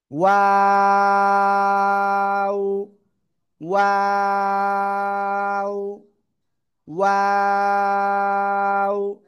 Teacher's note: আর এই অক্ষরের নাম কি? দুই ঠোঁট গোল করতে হবে, শুরুতেও গোল হবে শেষেও গোল হবে, আর তিন আলিফ টেনে পড়তে হবে।